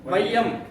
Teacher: அப்போ ஐ வந்துச்சா அப்போ இந்த இடத்துல பெறக்கூடிய மாத்திரை ஒன்றரை மாத்திரை அப்போ ஐகாரம் மொழிக்கு முதலில் வரும்போது எத்தனை மாத்திரை பெறும் இதான் கேள்வி ஒன்றரை ஒன்றரை மாத்திரை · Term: ஐகார குறுக்கம்